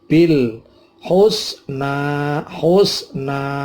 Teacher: ini ada al-ta'rif ketemu ha, namanya al-qamariyah, sehingga bilnya dibaca jelas, lam mati. Bil husna, husna, na ini juga termasuk mad tobi'i 2 harokat.